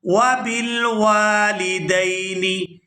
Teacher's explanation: یہاں واو کو الف مدہ کی وجہ سے کھینچ کر ادا کریں گے